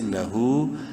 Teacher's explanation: ایک الف برابر ہا کو لمبا کریں گے الٹا پیش کی وجہ سے